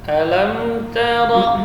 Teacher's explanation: Jadi ta tetap tipis ya, tidak boleh tebal karena pengaruh ra bukan ro. Jadi tidak boleh dibaca dengan o. · ra juga termasuk huruf takrir. Memiliki getaran, jadi maksimalnya hanya 2 getaran. Alam tara. Jadi ta tetap tipis ya, tidak boleh tebal karena pengaruh ra bukan ro.